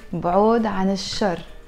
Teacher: the L in إل شر is not pronounced because شر starts with the letter شين and شين is a sun letter